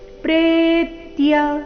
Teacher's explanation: ಗಮನ ಎರಡನೇ ಮೂರನೇ ಅಕ್ಷರದ ಮೇಲೆ ಆಘಾತ ಈ ಶಬ್ದದಲ್ಲಿ ಭವತ್ ಪ್ರತ್ಯತ್ಯಾಗಿ ಪ್ರೇತ್ಯ ಪ್ರೇ ದೀರ್ಘ ಬಂದು ನಂತರ ಆಘಾತ ಬರಬೇಕು